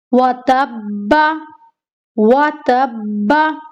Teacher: ता को बा के साथ मिलाना है मजबूती के साथ, क्योंकि क्या है इसके ऊपर तशदीद। तशदीद वाले हर्फ पर हमें हमेशा सख्ती करनी है।